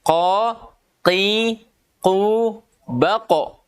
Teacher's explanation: Pangkal lidah bertemu dengan langit-langit atas atau disebut anak tekak. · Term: huruf qaf